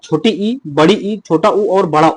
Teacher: ये सभी आपके संवृत स्वर हैं। यानी कि जिन स्वरों के उच्चारण में मुख द्वार लगभग बंद सा रहता है